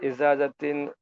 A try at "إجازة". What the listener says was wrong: আলা ইজাজাতিন, ইজাজা, জিম আর জার উচ্চারণটা পার্থক্য হবে।